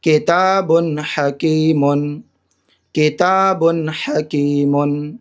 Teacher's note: یہاں تنوین کے بعد ہا حروف حلقی میں سے آ رہا ہے تو یہاں پر ظاہر کر کے پڑھیں گے جلد